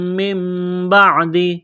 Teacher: یہاں نون ساکن کے بعد با ہے، تو یہاں پر اقلاب کریں گے، آواز ناک میں چھپائیں گے